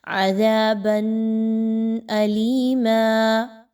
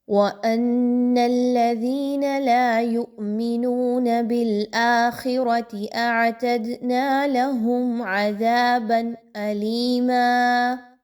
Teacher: نون کی جو ساؤنڈ بنے گی با 2 زبر بن، بن، اس ساؤنڈ کو آپ نے بڑا کلیئر پڑھنا ہے۔ اب یہاں پہ غنہ نہیں ہونا چاہیے۔